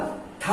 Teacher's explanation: ठा बोलोगे जीभ टेढ़ी हो जाएगी, इसलिए ये मूर्धा से होते हैं